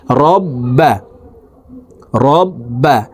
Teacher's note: র বা জবর রব, বা জবর বা, তাসদিদওয়ালা হরফ দুইবার উচ্চারণ করিয়া পড়িতে হয়। একবার পূর্বের হরকতের সঙ্গে আরেকবার নিজ হরকতের উচ্চারণ হবে।